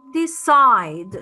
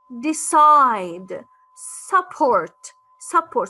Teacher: For example, you say decide. So you use high pitch when you say the second syllable of the verb. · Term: second syllable is stressed